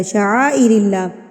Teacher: اللہ سے پہلے زیر پڑھی، اس کو ہم نے باریک پڑھا